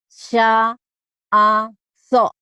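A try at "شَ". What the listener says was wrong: Ini shin. Belum ketemu tuh shinnya ya. Belum keluar masih Madura nih.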